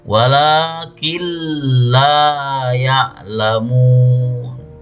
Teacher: Cara membacanya yaitu dengan mengidghamkan nun atau tanwin pada lam dan ro tetapi tanpa dengung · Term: idgham bila ghunna